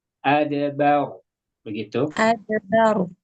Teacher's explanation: adbar tebal tapi kurang tebal sedikit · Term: ro sukun